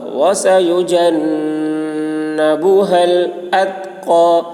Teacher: نون مشدد غنہ ہوگا ، وسيجنبها الأتقى، تا میں آواز ٹکرائے گی نہیں، اتقى، قاف